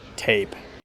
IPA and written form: teɪp (tape)